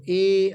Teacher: अर्ध विवृत स्वर देखो ए आया तो आधा मुख खुला तो इसको हम लोग अर्ध विवृत बोलेंगे। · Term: अर्ध विव्रत